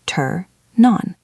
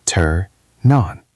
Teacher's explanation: Make that N sound very long.